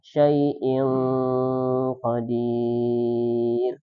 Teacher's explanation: Syai'in qa, ada tanwin ketemu qaf, dibaca ikhfa, disamarkan innya menjadi ing, kemudian baru dilanjutkan. Jangan lupa didengungkan.